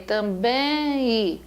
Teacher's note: Em som nasal do E. É o som do E nasal.